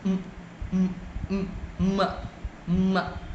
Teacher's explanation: your mouth area will be shut down completely and the air will be released only through your nose